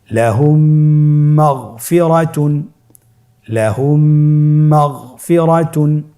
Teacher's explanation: মিম সাকিনকে পরবর্তী মিমের সাথে মিলিয়ে পড়তে হবে গুণনার সহিত।